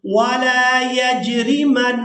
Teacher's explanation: نون مشدد پر غنہ کریں گے